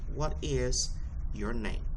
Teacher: You see that name? The tone of it dropped a little bit. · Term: Fallen intonation, falling intonation